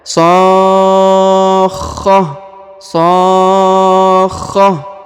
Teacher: huruf kho-nya ditahan dan ditekan 2 harokat ya. Sakhah, sakhah ya, harus ada tanda penekanannya pada huruf kho.